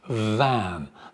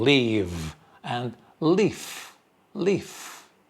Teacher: The first one, van with a vv. You can feel vibration. Van. The second one, fan.